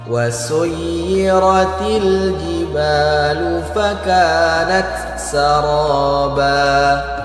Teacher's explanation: Perhatikan kalimat wasuyirati. Huruf ya itu ada tasydidnya maka harus kita tekan.